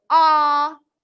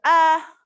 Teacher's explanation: it's much more tense to say ah than it is to go uh and of course that's a short u sound if I relax